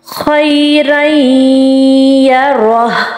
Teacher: تنوین کس کو کہتے ہیں، 2 زبر 2 زیر 2 پیش، را 2 زبر الف، رن ہوتا ہے. رن اینڈ پہ نون کی وائس آ رہی ہے تو اس کو ہم نے بالکل چھپا دینا ہے، نیکسٹ والے لیٹر میں داخل کر دینا ہے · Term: ادغام